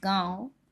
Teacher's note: अनुनासिक इसलिए क्योंकि मुख तथा नाक दोनों की सहायता से इसका उच्चारण हो रहा है